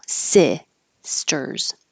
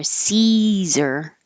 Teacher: Caesar has the E vowel, so your tongue is much higher